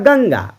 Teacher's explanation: अनुस्वार वाला ध्वनि होता है अपने से बाद में आने वाले व्यंजन के वर्ग का पांचवा व्यंजन होता है